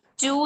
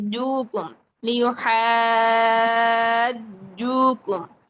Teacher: چے کی ساؤنڈ آ رہی ہے جبکہ جے کی ساؤنڈ آنی چاہیے. جوکم لیحاجوکم، چو نہیں.